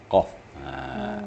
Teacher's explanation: Ada getaran di pangkal lidah.